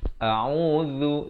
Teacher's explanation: Hamzah makhrajnya di pangkal kerongkong, Ain makhrajnya di tengahan kerongkong